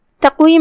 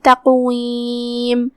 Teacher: تقویم میں بھی یہاں قاف کا دھیان رہے، اس پہ جزم ہے تو قاف کو ہلا کے یہ کلمہ پڑھنا ہے